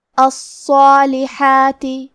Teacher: حرف الصاد پہ تشدید ہے تو ہمیں دو حرف کے برابر صاد کو پڑھنا ہے، اور کیونکہ یہ حرف حروف التفخیم میں سے ہے تو ہم صاد کو بھاری آواز میں پڑھیں گے، اور صاد پہ کھڑا زبر بھی ہے تو یہاں مد الف ہے. · الصالحات ہا کی ادائیگی حلق کے درمیان والے حصے سے ہے